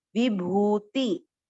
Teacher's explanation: भू को खींचना है, वी और टी को नहीं खींचना